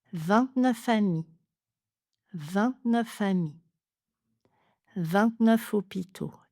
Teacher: J'entends F et je vais en fait ajouter un nouveau son, le V à la place. · On parle d'enchaînement parce que quand je prononce le mot 29, on entend déjà le F. Je vais juste l'enchaîner avec le mot suivant. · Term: liaison en V, enchaînement en F